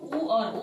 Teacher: ओष्ठ से होता है। क्योंकि जब हम उ बोलते हैं तो हमारे जो ओठ है ओष्ठ है वो क्या हो जाते है? गोल हो जाते हैं।